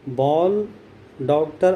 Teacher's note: बॉल, डॉक्टर आदि में ओ उच्चारित होता है, और वह आ और ओ के बीच की ध्वनि है।